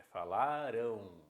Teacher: É como se fosse um ditongo, como se fosse, não. É um ditongo decrescente nasal.